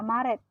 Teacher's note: Yang keempat, fonem E tengah atas pusat tak bundar. Secara umum direalisasikan sebagai bunyi E tengah atas pusat tak bundar seperti pada kata Maret.